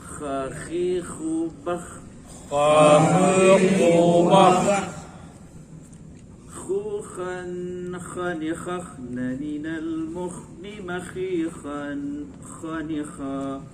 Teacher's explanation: Kemudian kha dikeluarkan dari pangkal tenggorokan.